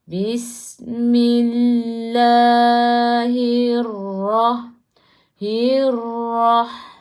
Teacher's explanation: Hirrah biar ada takrir tu. Biar ada getaran tu.